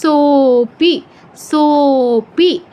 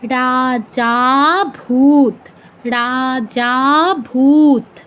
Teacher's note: অবগ্রহ থাকলে আগের অক্ষরটা এক মাত্রা বেড়ে 3 মাত্রা হয়ে যায় এবং এর উচ্চারণটা হয় দীর্ঘ থেকেও বেশি। তো দীর্ঘ থেকেও বেশি ওই উচ্চারণটাকে বলা হয় প্লুত উচ্চারণ, ঠিক আছে।